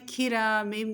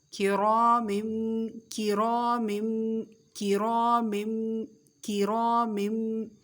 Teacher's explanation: کاف کے نیچے زیر ہے اس لیے بھی باریک ہوگا، ویسے بھی یہ حرف باریک ہی پڑھا جاتا ہے